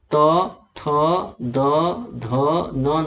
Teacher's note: दांत का स्पर्श करती है जीभ का अगला भाग। तो जीभ का अगला भाग जो स्पर्श करता है, इसीलिए इसे दंत वर्ग में रखा गया है।